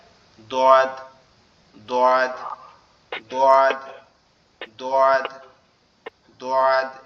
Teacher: জিহ্বার গোড়া সামনের উপরের দুই দাঁতের মাড়ির সঙ্গে লাগবে